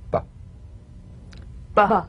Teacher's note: voiced labial stop or plosive consonant a drumbeat staccato consonant close the lips together gently and let them spring apart lightly play this on the springing away from contact not by pressing